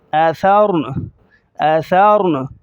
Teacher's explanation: حمزہ زبر آ، ثا زبر ثور، آثار، نون زبر نا، آثارنا، وقفاً آثارن، آثارن۔ نون پر جو زبر ہے وہ ظاہر نہیں کریں گے اسٹاپ کے وقت، را کو موٹا کریں گے۔